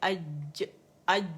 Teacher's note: اگر آپ جیم بھی بولتے ہیں تب بھی یہ اوپر جاتی ہے اور اس تالو کے غار میں جا کے لگ جاتی ہے، تو وہ جیم کا مخرج ہے.